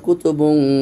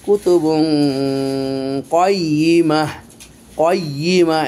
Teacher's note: কফের গুন্না মোটা হয়, এই জন্য আমরা কফের গুন্নাটা মোটা করতেছি।